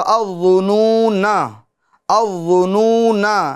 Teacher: زبر کے ساتھ، الف کے ساتھ نہیں پڑھیں گے، یعنی الف مدہ نہیں ہوگا